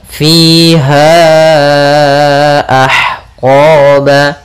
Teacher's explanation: Panjangnya untuk mad jaiz munfasil yaitu 4 harokat.